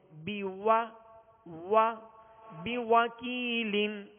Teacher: واؤں کو جب ادا کریں گے تو ہونٹوں کو گول کریں گے، ہونٹوں کی گولائی یہ واؤں کا مخرج ہے، اور ہونٹوں کو گول کرنے کے بعد پھر اس کی جب زبر پڑھیں گے تو اس وقت آواز اور منہ کھول دیں گے.